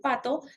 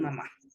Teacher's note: se producen cuando los dos labios se juntan. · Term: bilabiales